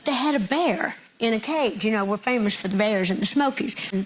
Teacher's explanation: I was told to listen for a sh sound on the s's.